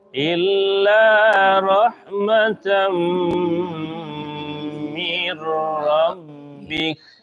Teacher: Nah, nak terangnya jadi idgham dia, Bu. Min dia jadi mirra.